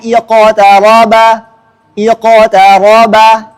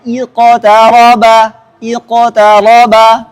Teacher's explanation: Kita contohkan dua mazhab secara langsung, condong ke fathah dan condong ke kasrah.